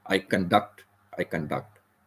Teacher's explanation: this emphasis is on the second syllable duct